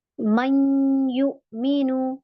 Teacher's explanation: हम पूरा कंप्लीट गुन्ना नहीं करते, हल्का फुल्का गुन्ना होता है उसमें। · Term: इदगाम नाकिस